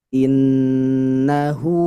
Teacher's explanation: Innahu nun tasydid. Gunnah musyaddadah. Baca dengung yang lama.